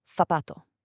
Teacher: But in most of Spain, the Z and that soft C get a totally different th sound, like in the English word think.